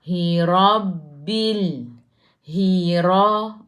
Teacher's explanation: Ra baca dengan tebal. Ra baris atas tafkhim.